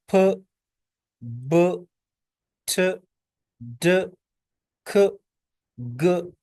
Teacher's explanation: Air is completely blocked, air मुकम्मल तौर पर स्टॉप हो जाती है, ब्लॉक हो जाती है, एंड देन रिलीज सडनली, और फिर उसे अचानक हम रिलीज करते हैं, जैसे फ, ब, ठ, ड, ख, ग, ये सारी प्लॉसिव यानी स्टॉप साउंड है।